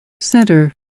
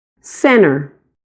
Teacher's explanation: Eu vou mostrar para você a leitura destas palavras que estão aqui como exemplo das duas maneiras, com a primeira pessoa pronunciando o T e a segunda pessoa assimilando o T ao som do N.